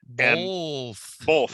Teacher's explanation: my family realizes that I say both with an L